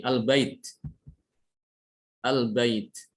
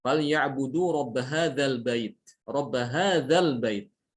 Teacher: Tapi kalau dia disambung dengan huruf sebelumnya, hamzah wasolnya hilang.